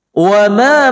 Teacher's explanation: Wa ma mad jaiz munfasil panjangnya 4 atau 5 harakah